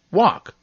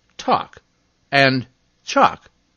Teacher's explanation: i'm actually silent in some words when i'm followed by another consonant